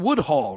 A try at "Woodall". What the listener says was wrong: No H. This is Woodall.